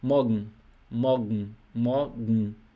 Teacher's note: E a N no final aqui, eles engolem um pouquinho, engolem essa letra E.